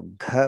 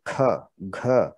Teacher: ग में थोड़ा सा ह जोड़ दीजिए तो घ बन गया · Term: महाप्राण व्यंजन